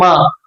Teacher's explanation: ఇక మా పెదాల సహాయంతో ఉచ్చరింపబడుతుంది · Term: ఓష్టవ అనునాసికము